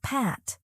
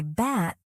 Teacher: Place your hand near your mouth. You'll feel a small puff of air on P but not on B. This air release gives English its crisp sound.